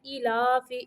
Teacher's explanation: حمزہ کھڑی زیر ای، لام کھڑی زبر لا، ای لا، فا زیر فی، ای لافی، ایلاف۔ دونوں کھڑیوں کو برابر لمبا کرنا ہے، ایلافی، ایک کو کھینچ دینا ہے ایک کو لمبا نہیں کرنا، دونوں کو برابر لمبا کرنا ہے، ایلاف۔